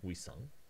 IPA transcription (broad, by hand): wisʌŋ